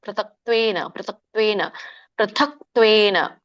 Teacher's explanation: ಮಹಾಪ್ರಾಣ ಇದೆ ದೊಡ್ಡತ ಇದೆ ಪ್ರಥಕ್ ಮತ್ತೆ ಕ ವ್ಯಂಜನ ಇದೆ ಸೋ ನೀವು ಕ ಮತ್ತೆ ತ ಮುಂದಿನ ಪದ ತ್ವೇನ ಬರುತ್ತಲ್ಲ ಕೂಡಿ ಹೇಳಬೇಕು · ಗ್ಯಾಪ್ ಬಿಡಂಗಿಲ್ಲ. ಪೃಥಕ್ ತ್ವೇನ ಇಲ್ಲ, ಕೂಡಿ ಹೇಳ್ಬೇಕು